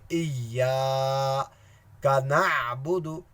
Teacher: الف کو یا کے ساتھ سختی سے ملے آئیں گے کیونکہ یہاں یا کے اوپر شدہ ہے